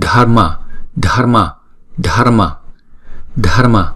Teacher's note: Không có đọc rõ là chữ R mà là đánh lưỡi thôi.